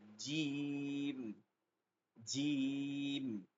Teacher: শক্ত করে জিহ্বার মধ্যখান থেকে, আগা কোনোভাবে দাঁতে লাগবে না, শক্ত করে জিম, মধ্যখানটা উপরের তালুতে চেপে ধরে বলতে হয় জিম, জিম, রেল, জিম।